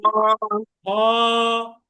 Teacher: তাহলে হলকের শেষ ভাগ হতে হ হরফটি উচ্চারিত হবে।